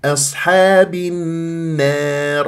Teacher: منبسطا اذا اصحاب النار اللام الشمسيه في النار بعدها حرف مشدد النون المشدده يعني غنه اكمل ما تكون ما انبها وما اقلل صوت الالف بعدها الراء الراء الراء مفخمه